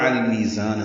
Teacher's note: زان میں زا کو تیز صفیر کی آواز سے ادا کریں گے، الف مدہ ہے، لمبا کریں گے.